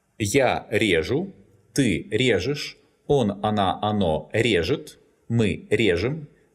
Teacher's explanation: It's conjugated in the same way that the above-mentioned verbs, but it's stressed on the stem in all forms, because the infinitive резать is not stressed on the last syllable.